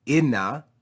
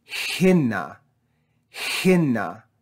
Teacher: the aspiration mark tells us to add rough breathing before this vowel